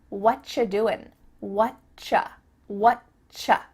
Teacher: we've cut out completely the word are, and the word you just becomes cha